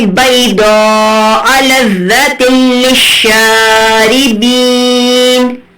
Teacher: ادغام بلا غنہ ہو رہا ہے جس میں آپ غنہ نہیں کریں گے، ناک میں آواز نہیں لے کر جائیں گے